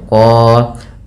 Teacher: Kemudian pada lafal qan ini kita baca dengan bacaan mad iwad, yaitu fathatain bertemu alif di akhir bacaan diganti tanwinnya menjadi panjang